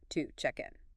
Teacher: This happens because to isn't stressed here. The stress is on check, to check in.